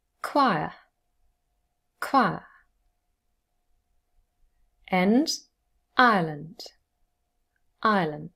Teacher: and then same for choir and ireland we have i plus schwa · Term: tripthong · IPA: /ɑɪ/ + /ə/